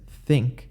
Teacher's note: the th sound in english as in think which is actually a dental fricative voiceless dental fricative